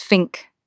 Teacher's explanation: People love to point out how th turns into an F or even a V in so many London voices. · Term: TH shift